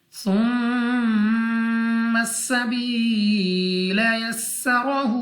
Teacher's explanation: सबसे पहले हमारे पास था नरमी के साथ पढ़ा जाएगा, मीम मुशद्दद गुन्ना करके पढ़ेंगे, या साकिन से पहले जेर या मद्दा खींच कर पढ़ेंगे, सीन सीटी वाली आवाज़ के साथ अदा होगा, रॉ पर ज़बर रा को पुर पढ़ेंगे, हा के ऊपर उल्टा पेश है।